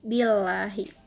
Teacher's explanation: Nah, billahi ini hukumnya adalah tarkik. Karena lafaz Allah didahului oleh huruf hijaiyah yaitu ba berharokat kasroh. Cara membacanya tipis